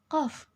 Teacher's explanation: Yang kedelapan, bunyi dorso-uvulars adalah bunyi konsonan yang dihasilkan melalui pertemuan antara pangkal lidah dengan anak tekak sehingga udara terhambat secara sempurna. Dalam bahasa Arab, hurufnya adalah qaf.